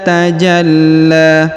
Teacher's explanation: Huruf ja langsung sambung ke huruf lam yang berharokat tasdid ya. Ditahan dan ditekan lalu dipanjangkan 2 harokat karena di atasnya terdapat alif kecil dan di depannya terdapat alif bengkok atau alif maksurah.